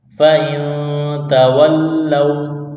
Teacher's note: نون ساکن کے بعد تا ہے حروف اخفا ہے غنہ کریں گے آواز ناک میں چھپائیں گے